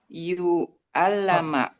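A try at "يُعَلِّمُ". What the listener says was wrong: Kan dipatahkan yang dikasrohkan yang huruf kedua. Ya, yu'allimu.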